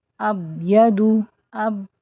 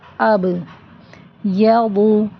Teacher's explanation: با ساکن ہے تو با پر قلقلہ ہوگا، آواز پلٹ کر آئے گی اب۔ ہم اس کو اگر ایسے پڑھ دیں اب یدو، اب تو یہ با ڈراپ ہو جاتا ہے، ٹھیک ہے۔